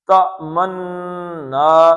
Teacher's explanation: نون پہ شد ہے تو یہ کتنے نون ہو گئے دو اس کو بھی کھینچنا ہے